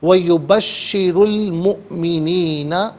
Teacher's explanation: مؤمنین میں حمزہ ساکن ہے، جھٹکے کے ساتھ ادا کیا جائے گا